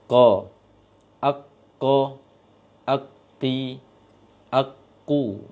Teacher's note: pasti tertahan dulu baru terucap hurufnya di pangkal lisan yang berat ke tenggorokan. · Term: huruf qaf